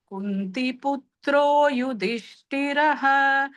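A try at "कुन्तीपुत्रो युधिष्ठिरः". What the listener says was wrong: குந்தி வந்து தீர்க்கம் போட்டுக்கோங்க, குந்தி புத்ரோ.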